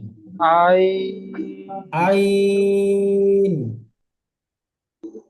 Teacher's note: আয় টান হবে না, আইন, আর শেষে টান হবে না। একদম শুরুতে আর একদম শেষে টান হবে না, মধ্যখানে টান হবে।